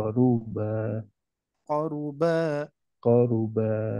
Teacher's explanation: hati-hati runnya Pak jangan panjang